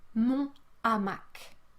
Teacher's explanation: there is no liaison for H aspiré.